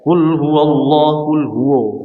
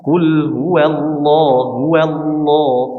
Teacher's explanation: Qul huwallahu huwallah. Jadi lamnya dibaca tebal, bukan wawunya.